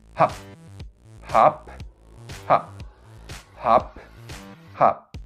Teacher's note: pyup is a voiceless bilabial stop with no aspiration